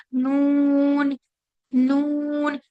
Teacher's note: सिर्फ जो आवाज है वो नाक से आएगी